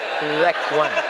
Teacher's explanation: Za, bukan za, pakai zal. Letakkan ujung lidah di gigi atas.